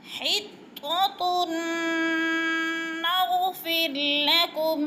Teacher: وقولو حطۃ، ہاں باریک ہے ادھر، حطہ کی ہاں باریک ہے، حلق سے نکالیں گے، اور یعنی گلے سے، اور طا موٹے حروف میں سے ہے، پر کر کے پڑھیں گے، اور طا مشدد ہے، تھوڑا سا جما کر سختی سے پڑھیں گے. · تن پہ نون مشدد ہے، اور اس کو یعنی غنہ کریں گے، سختی سے پڑھیں گے